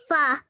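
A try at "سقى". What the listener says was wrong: It's not fa, it's qa. It has 2 dots above it. The fa has 1 dot, okay? Saqa.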